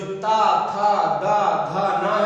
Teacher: है, जीभ जो है इन ता वर्ण को बोलने के लिए जो जिह्वा है वो दांतों को छूती है, इसीलिए उनको कहा जाता है दंती या दंत व्यंजन कहते हैं